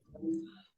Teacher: end here uh it's it goes from an ah sound into it's kind of a voiceless sound where you're rounding your lips and just basically like letting air pass through